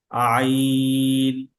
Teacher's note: আইনের শব্দটা শক্ত এবং চাপ দিয়ে করতে হবে। সেটা গলার মাঝখান থেকে এবং গলার মাঝখান থেকে এটা চাপ তৈরি হবে এবং টাইট বা শক্ত করে এটাকে উচ্চারণ করতে হবে।